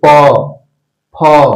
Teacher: तो ये जो भी उच्चारण हम लोग करते हैं प फ ब भ का, वो हम उच्चारण करते हैं ओष्ठ से।